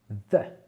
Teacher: Ce ne sont pas les mêmes vibrations qu'en français. C'est un tout petit peu de vibration, mais on garde quand même la langue légèrement entre les dents.